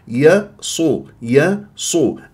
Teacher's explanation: الطريقه بعدها يا ساكنه من الطبيعي حركتين ي صو ي صو الياء مرققه الصاد مفخمه من احرف الاستعلاء